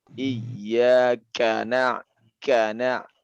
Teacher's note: Kaf ini dia syiddah dan dia hamas ya. Iyyaka kana ada percikan angin ya.